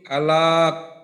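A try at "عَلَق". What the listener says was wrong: আলাক। আচ্ছা ঠিক আছে, আপনার উচ্চারণ কিন্তু ঠিক আছে, সমস্যা নেই। আচ্ছা এইখানে যেটা একটু সমস্যা, যে মনে করেন আলাক, লামের উচ্চারণটা একটু লম্বা হইল, তো লম্বা কিন্তু করা যাবে না।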